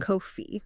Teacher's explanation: Coffee, the drink, ends with an elongated smiling e sound.